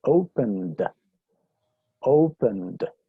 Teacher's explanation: Si la pronunciación del verbo termina en un sonido sonoro, ¿cierto? Por ejemplo, N, ¿sí? Entonces lo pronuncio ese sufijo ed con un sonido de D.